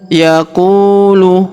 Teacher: Huruf qu kita panjangkan dua harakat karena wau sukun di depannya